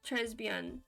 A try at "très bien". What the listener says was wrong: You don't pronounce the S in Trey. It's silent.